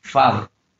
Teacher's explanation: Then, for example, we have the word father. Then it has two syllables, and the prominence or the emphasis is on the first one, father. So that's the stress.